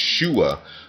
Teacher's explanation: the word save in Hebrew, which is pronounced shua, with the glottal stop at the end